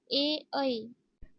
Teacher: कंठ व तालू स्थानापासून उच्चारले जाणारे स्वर